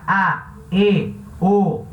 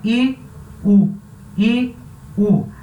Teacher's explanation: A sua boca abre na hora de falar, ela cria um espaço maior. E a vogal fechada é o I e o U. E você fala com a boca mais fechadinha.